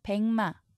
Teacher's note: 미음 앞에서 기역이 이응으로 소리납니다. 비음화가 일어났죠. 이 발음대로 옮기면 이렇게 쓰셔야 합니다.